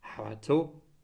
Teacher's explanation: the ó no longer undergoes apocope and is pronounced